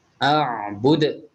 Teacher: ada qalqalah kubra, berbeda seperti qalqalah sughra. Jadi lebih kuat syiddahnya dan qalqalahnya lebih tebal.